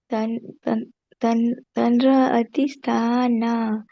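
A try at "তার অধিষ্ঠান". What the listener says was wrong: So this word, it is Thara. N is silent. Thara.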